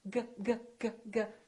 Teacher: Your tongue is touching in the back, g. However, the G is not releasing very much. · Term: ng sound